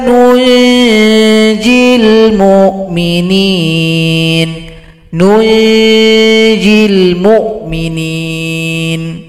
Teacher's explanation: Jadi nun kecil ini gabung pada huruf nun, gabung pada huruf jim. Sehingganya dia dibaca ikhfa hakiki, dibaca dengung serta sama-samar mengarah kepada huruf jim.